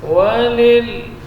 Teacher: posisi lidah di bagian sisinya itu menempel pada gusi atas